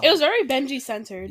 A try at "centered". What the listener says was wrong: Centered. Bitch, it's centered, not censored. No, you said censored.